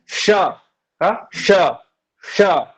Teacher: ठीक है, तो ये जो मूर्धन्य न और मूर्धन्य श, ये दोनों मूर्धा से निकलते हैं